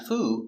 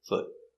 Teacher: Not the long oo, not foo, but foot. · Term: short foot